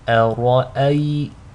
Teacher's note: So to recite this correctly, make sure the hamza is light, the ra is heavy, and the second hamza is light.